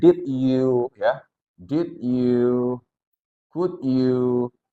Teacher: ketika teman-teman menemukan suara de ketemu dengan y, maka ini bisa berubah menjadi suara j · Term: word connection